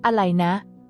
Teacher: This substitution of the R sound with L is a common example and is particularly prevalent in fast speech or more informal settings. This sound change allows the tongue to assume a more comfortable and natural position during speech, making the conversation flow more smoothly and understandably.